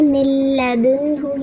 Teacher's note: Direct لام اور را کی آواز آئے گی، نون کی آواز کو بالکل اسکپ کر دیں گے، نون کی بالکل بھی تدوین کی یعنی غنے کی بالکل بھی آواز نہیں آئے گی۔ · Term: ادغام بلا غنہ